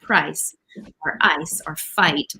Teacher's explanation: It's a combination of two vowel sounds ah and E they come together to make the sound I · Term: price vowel